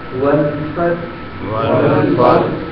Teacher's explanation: یہ جو ہا ہے اس کی خوبصورتی واضح ہو، کیونکہ مخرج ہا کا حلق سے ہے اور اس کو ہمیں ساکن کرنا ہے وقت کی وجہ سے، لہذا حلق سے آواز آئے